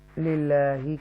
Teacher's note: اللہ کو ترقی کے ساتھ پڑھیں گے، للہ کیونکہ زیر آ رہی ہے